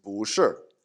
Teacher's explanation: The verb to be, 是, is negated by 不, or because it's 不 becomes second tone when it becomes before a fourth tone, so it becomes 不 是.